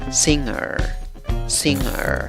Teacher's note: Pronuncias esa sílaba como sing, sing. La segunda sílaba empieza con el sonido de schwa. Acuérdate, no es A, ni E, ni O.